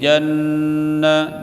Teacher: Inda rabbihim him, izhar syafawi. Janna nun tasydid tajibul gunnah, dibaca dengung, tahan bacaan janna, namat asli.